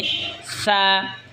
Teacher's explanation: জিহবার আগা সামনের উপরের দই দাঁতের আগার সঙ্গে লাগা উচ্চারণ হবে সা